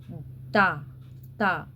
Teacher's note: ता जीभ कहां टच कर रही है? सीधे दांत पर